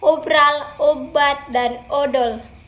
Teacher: sehingga bentuknya melebar seperti pada kata esok dan edar yang terakhir pada vokal o bibir dimajukan sedikit dan bentuknya agak bundar